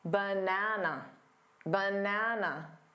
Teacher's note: Banana, da-da-da. The middle syllable is the stressed syllable. It's the one you hear the loudest and longest. That also means that the unstressed syllables need to be quicker and quieter.